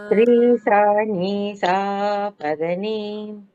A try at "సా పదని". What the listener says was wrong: అక్కడ నీ దీర్ఘం లేదు కదా. సా వెంటనే రీసాని స్టార్ట్ చేయాలి. సా పదని రీ సాని.